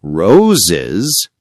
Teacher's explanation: In roses, the S adds a small extra syllable, like is.